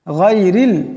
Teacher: এখানে রাকে পাতলা আওয়াজে পড়তে হবে, গানকে মোটা আওয়াজে পড়তে হবে। গায়রিল, গায়রিল পড়া যাবে না, গায়রিল, এখানে গানকে অল্প মোটা আওয়াজে পড়তে হবে।